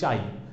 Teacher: আকে যত ইচ্ছা টানতে পারছি, কিন্তু ই এর ক্ষেত্রে কিন্তু আমি চাই টানতে পারছি না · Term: অর্ধস্বরধ্বনি